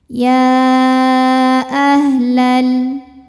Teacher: Jadi walaupun penulisan mad tabi'i dengan hamzahnya bersatu, tapi secara makna ini sudah ada dua kata. Maka dibaca panjang, ya-nya boleh 4, boleh 5 harokat. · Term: mad jaiz munfasil